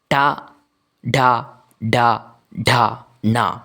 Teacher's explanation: മൂർധാവിൽ തട്ടിത്തടഞ്ഞ് നിശ്വാസ വായുവിനെ അങ്ങനെ പുറത്തേക്ക് വിട്ട് · വായിന്റെ മുകളിലെ അണകൾക്ക് മധ്യേയുള്ള വായുടെ മേൽത്തട്ട് ആ മേൽത്തട്ടിൽ തട്ടിക്കൊണ്ട് തട്ടി തടഞ്ഞു കൊണ്ടാണ് ടയുമായി ബന്ധപ്പെട്ടിട്ടുള്ള അക്ഷരങ്ങൾ നമ്മൾ പുറത്തേക്ക് ഉച്ചരിക്കുന്നത് അപ്പോൾ അതുകൊണ്ടാണ് ടയുമായി ബന്ധപ്പെട്ടുള്ള അക്ഷരങ്ങളെ മൂന്നാമത്തെ വിഭാഗത്തെ ടവർഗ്ഗത്തെ നമ്മൾ മൂർധന്യം എന്ന